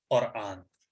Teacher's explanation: बड़ा वाला काफ जो कुरान है, उसमें यह है कि आखिर जबान को तालु के हिस्से से टच करेंगे तो काफ अदा होगा